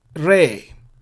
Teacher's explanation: the vowel is tsere. It's a long e sound. So it will be re.